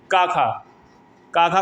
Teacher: काखा कंठ से बोली जाने वाली ध्वनियाँ है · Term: कंठ ध्वनियाँ